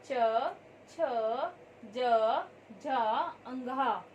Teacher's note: इनका उच्चारण करते समय हमारी जीवा तालु को स्पर्श करती है, इसलिए इसे हम तालवे वर्ग भी कहते हैं।